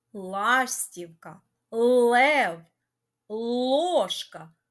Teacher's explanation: з картинками в назвах яких є перший звук ль м'який абом в назвах яких перший звук л твердий